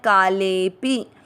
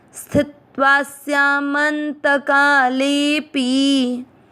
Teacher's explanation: काले ले के बाद में अवग्रह, ले की मात्रा को लंबा खींचते हुए छोटी मात्रा वाला पी पढ़ना है